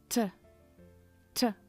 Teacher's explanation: Já em inglês a pronúncia é com um pouco de ar.